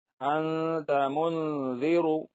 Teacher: نون کی آواز کو ناک میں چھپا کر پڑھنا چاہیے، نوک زبان تالو سے ہٹا کر، جیسے اردو میں پنکھا کے نون کو پڑھتے ہیں۔ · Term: اخفا